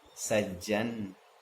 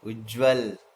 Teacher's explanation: तो हर हाल में पहला वर्ण त दूसरे वर्ण की तरह ही बदल जाएगा, यानी दो वर्ण एक समान हो जाएंगे, एक वर्ण दो बार आएगा। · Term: समीकृत व्यंजन संधि